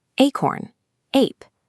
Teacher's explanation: Listen to the start of these words: acorn, ape. The jaw stays higher, and you hear the clear long A sound.